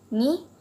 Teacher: Ni produces the vowel sound I and lips are not round.